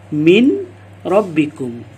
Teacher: kita memisahkan antara bacaan nun mati atau nun sukun dengan bacaan ra. Jadi kita baca min rabbikum.